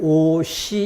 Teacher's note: 앞말의 받침 자리에 시옷이 뒤로 넘어가 시 이렇게 소리가 납니다. 근데 시옷 그대로 유지가 돼 있죠.